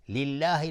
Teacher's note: لله لفظ جلاله ترقیق است چون کسره داره